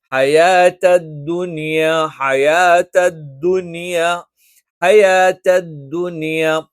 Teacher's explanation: ധ ധ ധ എന്ന് പറഞ്ഞിട്ട് പുറത്തേക്ക് കാറ്റ് വരാൻ പാടില്ല. കാറ്റില്ലാതെ ഉച്ചരിക്കണം.